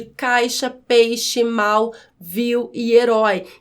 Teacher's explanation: o ditongo oral na pronúncia o ar passa apenas pela boca a gente não utiliza o nariz para pronunciar os ditongos orais · ditongos orais, cujo som não passa pelo nariz, passa apenas pela boca, é pronunciado apenas com a boca.